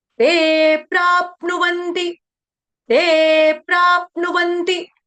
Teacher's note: जिसको आघात लेना है वो आधे प का उच्चारण करेगा क्योंकि आगे जो है संयुक्त वर्ण आ रहा है